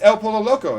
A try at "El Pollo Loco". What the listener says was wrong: It's Pollo. L's are Y. L's are Y. L's are Y.